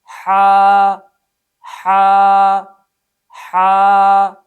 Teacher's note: صفت ہمس کی وجہ سے اس حرف کو ادا کرتے ہوئے سانس جاری ہوگا۔